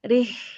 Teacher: Kemudian huruf ro diikuti dengan huruf H. H di sini sukun harokatnya dibaca hamas atau keluarin nafasnya. Keluarin nafasnya karena di al-hamas dan ar-khawah.